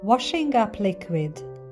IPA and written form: ˌwɒʃ.ɪŋˈʌp ˌlɪk.wɪd (washing-up liquid)